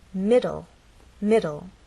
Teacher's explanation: This word has two syllables, middle, and the stress is actually on the first part. It ends in an E, but the final sound is an L sound because the E is silent.